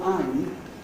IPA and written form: aɪm (I'm)